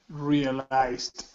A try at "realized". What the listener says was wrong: So remember, with the ed endings, that e is not pronounced. We don't say realized. We do not pronounce that. We only pronounce the id sound when the word ends with a t or a d.